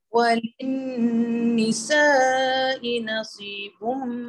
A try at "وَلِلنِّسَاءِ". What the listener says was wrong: Okay, lagi panjang. Walin nisa. Empat harokat paling kurang.